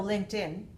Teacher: And L-I-N-K, voiceless, ED has to be pronounced t.